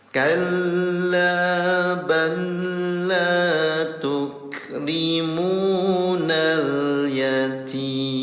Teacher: cara bacanya leburkan ke huruf lam lagi nol harakat enggak ditahan ya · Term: idgam mutajjanisain, idgham mutajanisain